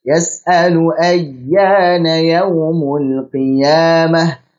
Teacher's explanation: Huruf ya bertasydid, kita tekan sedikit tapi tetap dialirkan.